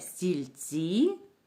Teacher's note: Так другий у цьому слові наголошений другий склад